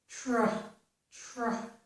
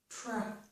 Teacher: to make the T sound, the tr, we put the tip of our tongue on the ridge behind our upper teeth. Then to make the r, we pull our tongue back. Tr, tr. There's no additional sound between there. · So start with the tongue on the ridge, then pull it back for the r sound. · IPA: /tɹ/